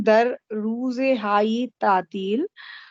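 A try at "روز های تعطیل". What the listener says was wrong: रूज पे कसरा ना दे, रूज हाय तातील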